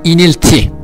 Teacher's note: Evet bir özel harfimiz daha normal Latin alfabesindeki i sesi [Müzik] Kürtçede Türkçedeki ı sesine yakın bir ses veriyor ama tam ı sesi değil i ile ı sesi arası bir ses [Müzik] verir Evet inilti i sesi şafkı i sesi Türkçedeki i